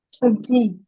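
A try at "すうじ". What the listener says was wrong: And not a G, it is a Suji, elongate. Right? Long sound. Suji.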